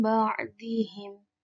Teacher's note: nun sukun bertemu dengan ba menjadi mim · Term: iklab